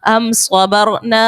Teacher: میم ساکن کے بعد با اور میم کے علاوہ صاد ہے، اظہار شفوی کا قاعدہ ہوگا اور غنہ نہیں کریں گے